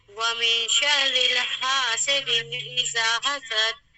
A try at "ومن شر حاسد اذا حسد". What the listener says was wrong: یہاں پر لام کہیں نہیں ہے. من شر کیوں کہہ رہی ہیں؟ من شر ری کہیے ری من شر